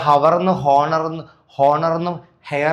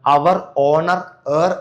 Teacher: ഇവിടെക്കെ H silent ആണ് കേട്ടോ ഇവിടെ ഹവർ ന്ന് ഹോണർ എന്നും ഹെയർ എന്നും അല്ല വായിക്കുന്നത് അവർ ഓണർ ഹർ എന്നാണ് കേട്ടോ ഡാഷ് അവർ ഡാഷ് ഓണർ ഡാഷ് ഓണർാ ർ ഇങ്ങനെയാണ് ഉച്ചരിക്കുക കേട്ടോ അപ്പോ